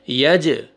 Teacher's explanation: یا فتحہ جیم سکون حروف قلقلہ میں سے جیم ڈبل ساؤنڈ آئے گا